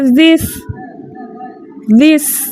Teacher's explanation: ذال باریک بغیر سیٹی کے اور سین جو ہے سیٹی کے ساتھ